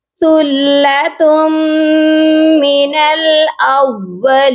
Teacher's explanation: تا کو میم کے ساتھ ملائیں گے تو غنہ کریں گے